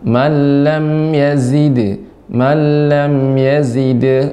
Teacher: zai ini sifatnya tajam ya. Jadi dan juga banyak desisnya, banyak tajam pengucapannya.